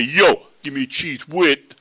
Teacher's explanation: T h is at the end of the word, usually makes a t sound.